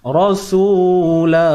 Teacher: kalau kita berhenti rasulah jadi mad iwad, dua harakat